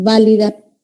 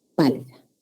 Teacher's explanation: Similar tienen en que son bilabiales. Ambas son bilabiales. Y son oclusivas también. Y la diferencia está en que una es sonora y la otra es sorda.